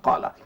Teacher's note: Kerana kalimah qala tu qa tu panjang dia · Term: mad asli kalimi